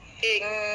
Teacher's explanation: nun yang bertasyd kena baca dua harakat